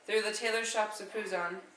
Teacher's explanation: The word tailor starts out with a stressed syllable and ends with an unstressed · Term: stressed and unstressed syllables